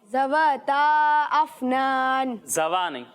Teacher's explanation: ذال میں سیٹی کی آواز نہیں آئے گی